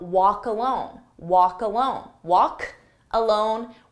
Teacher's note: I take that K sound and I put it on the next word and it becomes cologne. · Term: linking